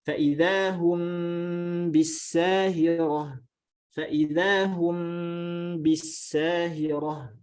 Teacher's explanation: Maka kita membaca ikhfa syafawi ini ya dengan gunnah disertai dengan itbaq itu sudah masuk ke dalam definisi ikhfa.